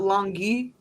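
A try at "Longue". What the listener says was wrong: No, it would be long. we're going by pronunciation rules too, so we're definitely leaving off the UE on the end of it.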